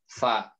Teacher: Nah, ini kesalahan biasanya orang-orang adalah ketika menyebutkan huruf fa itu adalah antara bertemunya dua bibir ya. Yang benar kan ujung gigi seri atas ketemu bibir bawah. Fa, ya ketemu punggung, lebih tepatnya ke punggung ini nih.